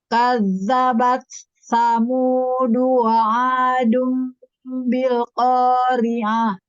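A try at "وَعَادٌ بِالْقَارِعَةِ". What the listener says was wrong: Nah, di sini pada saat dunya ini dhammahnya sempurnakan. Jadi supaya tidak terdengar seperti adem ya, jadinya agak sedikit miring gitu ya.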